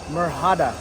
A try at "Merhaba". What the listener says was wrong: don't say the h it's meraba